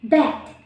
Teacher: B, voice, bilabial, and plosive.